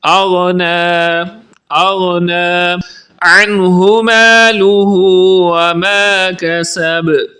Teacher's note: اغنا کی غین کو درست پڑھیں گے، یعنی حروف مستعاریہ میں سے ہے، اسے پر کر کے پڑھیں گے موٹی آواز میں، تھک ساؤنڈ میں۔ اغنا عنہ مالہ وما کسب، کسب کی با پر قلقلہ کریں گے۔